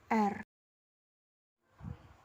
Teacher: dihasilkan ialah R konsonan getar uvular konsonan getar ovular terjadi bila artikulator aktif yang menyebabkan bergetarnya udara ialah pangkal lidah lidah belakang dan artikulator pasifnya ialah anak tekak